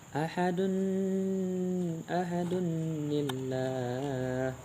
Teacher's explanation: huruf yang terakhir itu berharakat dhammah, dan setelah itu ada alif lam yang mati, maka diantaranya ditambahkan nun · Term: nun wasal